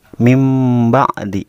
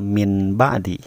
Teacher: iqlab artinya membalik atau mengganti maksudnya menggantikan bunyi Nun menjadi Meme misalnya n jadi m kita iklan itu apabila nun mati atau tanwin bertemu dengan huruf